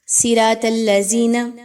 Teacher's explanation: ذال کو زال میں بدل دیتے ہیں، صاد کو سین میں